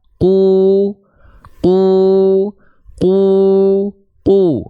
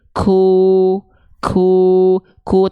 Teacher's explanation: jadi seluruh pangkal lidah dari huruf q itu nempel ke langit-langit paling dalam langit-langit yang lunak · itu nempel ke langit-langit paling dalam langit-langit yang lunak karakternya sehingga huruf q itu dia tidak mengeluarkan nafas dia tidak mengalirkan nafas · Oke, sehingga ketika dilafalkan, ketikanya qaf berharokat dhammah, itu dia tidak mengalirkan nafas · tidak mengalirkan nafas qu qu qu qu nah tapi kalau teman-teman melafalkan huruf q tiba-tiba bocor nafasnya seperti ini ku kuu ku tandanya itu bukan k tapi apa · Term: huruf qaf